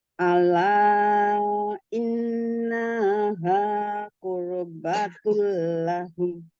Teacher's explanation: Idgham itu dilebur ya itu tapi tidak didengungkan ya. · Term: idgham bila guna